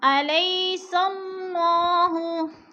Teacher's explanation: علیہ پہ یالین ہے، یالین کو لمبا بھی نہیں کرنا اور کھینچ کر بھی نہیں پڑھنا.